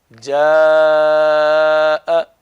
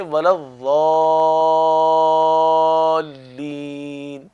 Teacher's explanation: خصوصاً مد متصل اور مد لازم, ان کو کھینچنا 3 الف کی مقدار, کم سے کم 2.5 سے 3 الف کی مقدار کھینچنا یہ واجب ہے